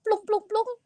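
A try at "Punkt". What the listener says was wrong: Pung, pung, bukan plung. Pung. Cara bacanya pung ya, pung. Cara bacanya pung.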